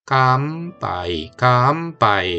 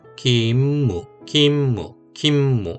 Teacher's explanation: 뒤에 입술이 다물리는 움이 오면 미음으로 하면 제일 발음이 편하게 되는 거죠